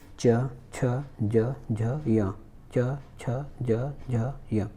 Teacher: आप च छ ज झ य बोलने पर आपका जो जीभ है ऊपरी दांत के मूल के आसपास जा रहा है। है ना, ऊपरी दांत के मूल के आसपास जा रहा है, तो उस हिस्से को हम कहते हैं तालु।